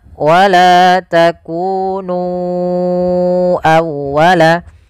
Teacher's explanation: Kemudian pada lafal nu awwalaka, ya di sini sama hukumnya dengan lafal bima anzaltu, yaitu adanya mad jaiz munfasil. Maka kita harus memanjangkan nu-nya sepanjang 4 atau 5 harakat.